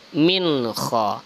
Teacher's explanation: ada nun sukun bertemu dengan kha, itu izhar halki, tidak boleh berdengung, jelas tanpa berdengung. Min kha, ini sama juga izhar syafawi, tidak boleh berdengung.